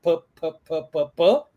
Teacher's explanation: é uma bilabial para falar você tem que dar tipo um beijinho né fazer duas juntar os lábios Então você só fica tipo um peixe fazendo Juntando os lábios · Então, você só fica tipo um peixe fazendo... juntando os lábios e sentindo o som explosivo do P, mas sem falar pá, pé, pi, pó, pu.